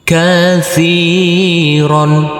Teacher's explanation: huruf ro yang berfathah tanwin ini kita kasih akhiran huruf n.